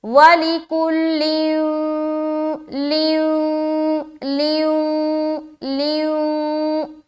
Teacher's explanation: ادغام ناقص کا قاعدہ. غنہ کے ساتھ ادغام کریں گے تو رکاوٹ بھی ہوگی کیونکہ غنے کی مقدار کیا ہے؟ ایک الف ہے